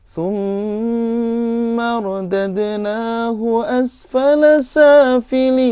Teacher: Nah, itu jiharkah depannya. Jiharkah pertama naik, bayati kedua datar.